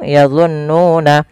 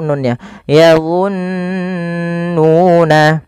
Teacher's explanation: Cara membacanya yaitu menahan suara nunnya sepanjang 2 harokat. Maka yadhunnuna jangan langsung yadhunnuna tapi ditahan dulu nunnya. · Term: bacaan Gun, bacaan gunnah